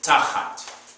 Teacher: it's going to sound like you're leaning on the first syllable with the accent.